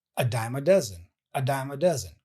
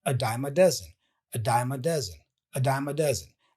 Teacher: So here we have a schwa sound, and then a die, and then the dime, the M at the end is joined with the schwa sound for the article a. So m, a dime, and then dozen.